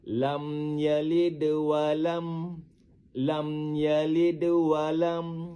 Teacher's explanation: Lam yalid walam, lam yalid walam, yalid walam. Dengar bunyi pantulan huruf dal tu halus saja, kecil saja. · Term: qalqalah sugra, qalqalah sugro